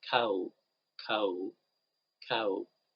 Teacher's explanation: if we pronounce the last sound it's actually a vowel so we say cow cow there is vibration because it's about